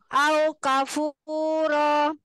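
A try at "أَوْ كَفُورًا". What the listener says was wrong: Naam, ro-nya panjangin kayak dua harokat. Au kafuro.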